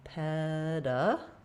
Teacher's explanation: So we'll have the stress marker, the vowel, peda. Letter A is going to be a schwa, unstressed.